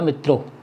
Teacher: पूरा व्याकरण शास्त्र इस बात को कहता है कि संबोधन में अनुनासिकता नहीं है